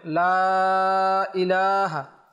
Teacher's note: মধ্য মুনফাসিলের কায়দা সেখানে 3 আলিফ টান দিতে হবে লা ইলাহা লামের উপর খারা জবর সেখানে 1 আলিফ টান দিতে হবে